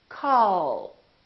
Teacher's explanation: We say call Bill. So the tongue is relaxed and it touches right behind the upper teeth and it stays there. So the American L is prolonged.